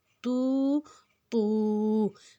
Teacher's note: کھڑی حرکت کو ہم نے دو حرکت جتنا لمبا کھینچنا ہے